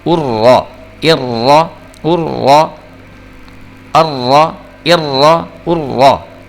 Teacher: لیکن یہاں اس کیس میں کیا ہے کہ تینوں شکلوں میں را کے اوپر زبر ہے، اس لیے ہم اس کو موٹا کر کے پڑھیں گے